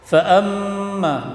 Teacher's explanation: mim tasydid tajibul gunnah dengung, itu ditahan